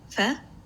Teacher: phoneme faire is produced when the moveable organ or active articulator the lower lip comes into contact with the upper front teeth · you are using the lower lip with the upper front teeth